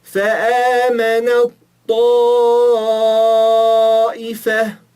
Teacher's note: o Té desaparece e só fica o Tó.